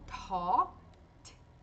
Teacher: o T de começo com mais ar, com aspiração